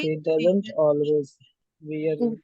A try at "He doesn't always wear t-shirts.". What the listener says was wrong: are all saying it right, but your music is not right, okay? Your music is he doesn't always wear t-shirts, right?